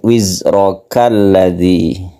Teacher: Ini kalau kita baca alladzi, kalau kita teruskan a-nya dihilangkan menjadi wizrakalladzi